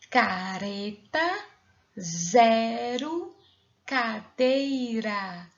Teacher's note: R com som fraco o som sai pela língua